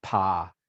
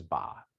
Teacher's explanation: voice onset time and basically it's just saying that the voice the vocal cords okay vibrate at a different time relative to the lips when you're producing pah versus ba